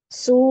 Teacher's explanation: ada wau sukun sebelumnya damah ya Su itu Dibaca juga dua harakat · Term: mad wau